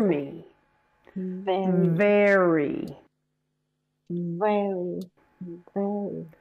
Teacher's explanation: Turn on your voice to say the V your upper front teeth are still touching your Lower lip the air is still aous stream let try practice Words At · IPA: /v/